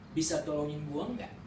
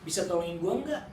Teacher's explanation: Usually this is falling intonation.